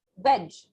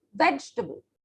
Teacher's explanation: i am stressing on the e sound veg so i cannot stress on the a sound yes so the a sound will become a short sound not